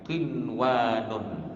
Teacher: Qinwanun asal saja bunyi dia. Ya, tidak ada campuran dengung ke panjang ke, tak ada. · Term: izhar mutlak